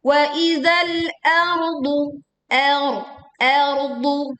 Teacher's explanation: Wa idzal ardu, huruf hamzah dibaca tipis, ro sukun dibaca tebal karena sebelumnya harokat fathah, kemudian dod dibaca tebal. Wa idzal ardu, ardu, seperti itu.